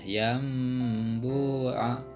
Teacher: nun sukun bertemu dengan ba, itu cara bacanya berubah menjadi mim ya, nun sukunnya. Yambu'a disertai dengan gunah. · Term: iklab